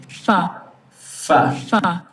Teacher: so you have your bottom lip touching your upper teeth. This is labiodental. · Velum is up and there is no vibration. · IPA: /f/